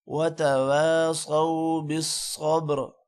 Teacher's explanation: وتواصوا بالحق وتواصوا بالصبر، صاد موٹا ہوگا، بالصبر کا صاد بھی موٹا ہوگا اور با پر قلقلہ ہوگا